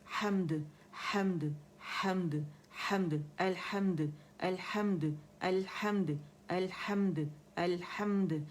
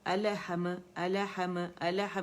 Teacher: میں لام کو الگ سے جھٹکا دے رہی ہوں, اس کے مخرج کو پہلے چھوڑ رہی ہوں, اور میم کو بھی ہم کر کے نہیں پڑھنا.